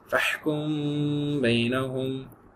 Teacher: Vibration ஆகுது பாருங்க, மீம் மூக்கோட சேர்ந்து ஒரு வைப்ரேஷன் ஆகும். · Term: இஹ்ஃபா